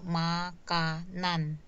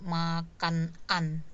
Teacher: maka konsonan n di kata makan ini bergeser ke sufiks an-nya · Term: pergeseran